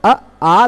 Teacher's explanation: अ संवृत है, आ विवृत हो गया